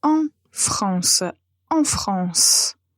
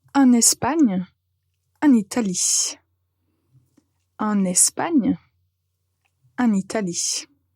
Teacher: nous allons en fait connecter la préposition et le pays et la voyelle nasale disparaît donc on va prononcer la lettre N comme Noe et pas